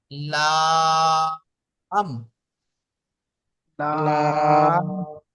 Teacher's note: তো ওই দাঁতের গোড়ায় গিয়ে জিহ্বাটা লাগবে, লেগে লাম উচ্চারিত হবে। তো জিভের আগার কিনারা এবং সামনের উপরের দুই পাশের দাঁতের গোড়ার সাথে লাগিয়ে উচ্চারিত হয় লাম।